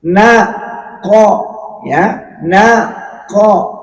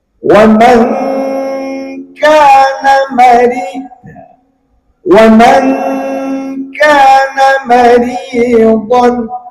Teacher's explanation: Kalau qf ini memang agak berat, beda dengan kaf. Kalau kaf lebih enteng.